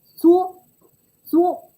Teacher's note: when it is pronounced as the high level tone, the 一声